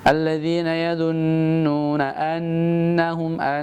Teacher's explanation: Kalimat di ayat 46 alladzina yadhunnun, itu jangan lupa ditahan ya. Didengungkan karena hukumnya adalah gunnah.